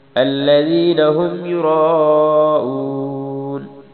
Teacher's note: یرا پہ مد کرنی ہے، را کو موٹا پڑھنا ہے، اس پر مد کرنی ہے۔